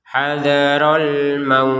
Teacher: terakhirnya huruf ta, maka harus ada nafas yang keluar.